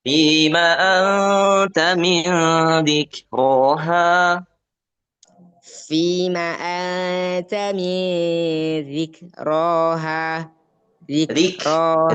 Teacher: huruf kaf kalau sukun sifat hamsnya ditunaikan